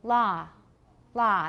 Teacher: they don't have so much rounding it's more like ah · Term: open o